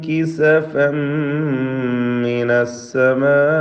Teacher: കിസഫൻ എന്ന തൻവീനിനെ പൂർണ്ണമായും മീമിലേക്ക് ലയിപ്പിച്ച് മണിക്കണം